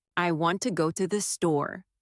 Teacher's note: The stresses on want and store. The words to and the are much softer. This creates the rhythm of English.